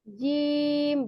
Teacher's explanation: kalau huruf gym itu pertengahan lidah dengan langit-langit atas gym bukan zim menyentuh enggak enggak menyentuh mendekati saja mendekati saja